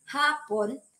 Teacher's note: Kapag ang diin ay nasa unang pantig